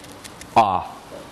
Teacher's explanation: And finally, there's the vowel in my pronunciation of caught. Your tongue goes back, it lowers a little bit, the lips aren't rounded in this case, and it's transcribed with this kind of script lowercase a.